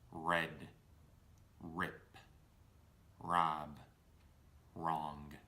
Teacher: Notice that these four words all either start with the letter R or the R sound, and in order to achieve this proper sound, my lips become very round at the beginning of the word